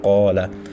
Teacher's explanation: جیسے قولا، قاف کے بعد الف ہے تو قاف موٹا حرف ہونے کی وجہ سے ہم نے الف کا ساؤنڈ بھی موٹا نکالا، قولا. اور باریک کی کینا، اب کاف کے بعد ادھر بھی الف ہے لیکن پیچھے کاف باریک ہے تو ہم نے ساؤنڈ باریک کیا.